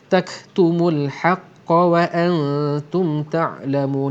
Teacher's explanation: Di sini ada sifat hamas. Kaf yang mati memang jelas bunyi hamasnya. Bunyi hembusan angin tak tak